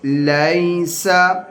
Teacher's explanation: اس میں یا لین ہے اس کو ہم لمبا نہیں کریں گے